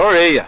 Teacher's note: Este é o R retroflexo, o popular R caipira